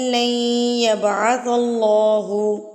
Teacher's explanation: یہاں پر ادغام ہو رہا ہے نون ساکن کے بعد اگر حروف یرملون میں سے کوئی حرف آ جائے تو وہاں پر نون ساکن کی آواز کو مدغم کر دیا جاتا ہے اور ملا کے پڑھا جاتا ہے. آپ دیکھیں کہ نون ساکن کے بعد یا آ گیا ہے، یرملون میں سے یا آ گیا ہے تو ہم اس کو غنہ کے ساتھ ادغام کریں گے.